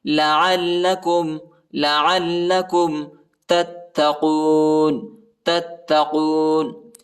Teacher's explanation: عین کو لام کے ساتھ ملانا ہے اور لام کو سختی کے ساتھ پڑھنا ہے